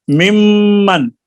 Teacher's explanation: نون کا میم میں ادغام ہوا ہے تو غنہ بھی ہوا ہے، لیکن یہاں پہ اختلاف یہ ہے کہ کچھ قراء علماء امام جو ہیں وہ کہتے ہیں کہ یہ مدغم کا غنہ ہے، اور کچھ کہتے ہیں کہ نہیں، مدغم فی کا غنہ ہے، یعنی دوسرے حرف کا غنہ ہے، کیونکہ میم مشدد میں بھی تو غنہ ہوتا ہی ہے نا.